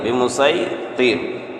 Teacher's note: اور یہاں پر جو صاد کے اوپر سین ہے، تو یہاں سین کو سین ادا کریں گے، بمسیطر۔ الا من تولى وكفر، الا من تولى وكفر۔